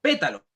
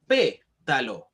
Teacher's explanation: en la antepenúltima silaba estamos acentuando la palabra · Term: palabra esdrújula, palabras esdrújulas